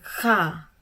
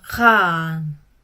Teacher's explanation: yang merupakan vokal pendek dan panjang, vokal A pendek kha, vokal A panjang khan